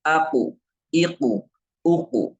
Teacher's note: makhraj Q pangkal lidah bertemu dengan apa bertemu dengan langit-langit lunak